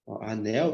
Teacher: Então esse L aqui tem som de u logo na palavra anel